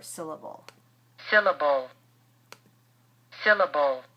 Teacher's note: the second and the third syllables in this word are much shorter, and they are not spoken with a great deal of stress